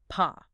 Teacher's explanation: Paw is a hard stop. Your lips close.